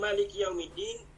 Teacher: Sebenarnya Maliki Yaumiddin, ma tu patutnya 2 harakat je. Kalau baca 1 harakat, dia ikut qiraat lain.